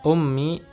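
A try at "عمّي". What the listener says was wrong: Ada ummi atau apa itu? Iya, kalau huruf ain berarti ammi ya. Kalau ummi huruf apa? Hamzah, ummi.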